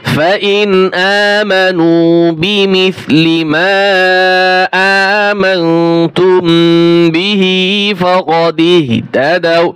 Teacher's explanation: ফাইন গুণ করা যাবে না, স্পষ্ট হবে, নুন সাকিনের পর হামজা আসছে